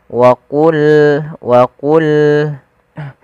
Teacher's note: Pada lafal wa qulna ya, qa salah satu huruf yang dia kita namakan dengan salah satu sifatnya adalah sifat huruf isti'ala, yang mana pangkal lidah kita harus kita angkat sehingga terdengar suara qa-nya menebal